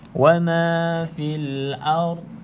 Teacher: pastikan al-ard ni tidak dilantunkan sebab dha bukan huruf qalqalah.